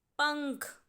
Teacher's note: जो अंग की आवाज़ है वो प के बाद आ रही है, इसीलिए प की खड़ी पाई पर हम बिंदु लगा देंगे और शब्द बनेगा पंख।